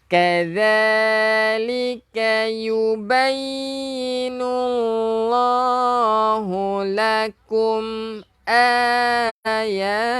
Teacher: hujung lidah keluarkan sikit untuk zal